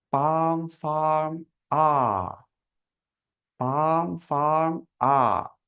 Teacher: আমাদের অষ্টম ভাও, এটা উচ্চারিত হচ্ছে জিহ্বার পেছন থেকে, এবং আমাদের ঠোঁটটা নিউট্রালে থাকবে, ওপেন, নিউট্রাল।